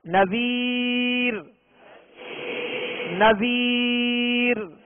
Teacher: اب وقف کی صورت میں اس کو باریک پڑھیں گے کہ اس کی قاعدہ یہ ہے کہ را ساکن سے پہلے یا ساکنہ ہو تو اس را کو باریک پڑھیں گے